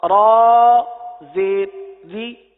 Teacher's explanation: ابھی ہم نے قاعدہ سنا کہ را کے نیچے زیر آ جائے تو را کو باریک پڑھتے ہیں